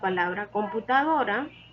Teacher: la palabra computadora es una palabra grave porque su sílaba tónica la penúltima sílaba